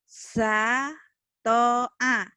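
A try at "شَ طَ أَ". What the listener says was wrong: kurang anginnya. Shin. Sha. Sha. Syata'a. Syata'a.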